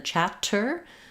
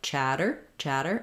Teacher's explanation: two T's in the middle of a word especially with tter are going to be a flap in American English